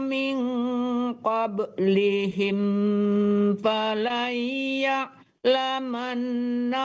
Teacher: Min qablihim itu tidak dengung ya. Kalau mim ketemu fa tidak dengung.